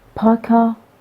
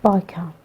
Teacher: p is voiceless consonant but b is voiced consonant